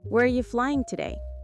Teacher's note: Notice how are you becomes arya very fast.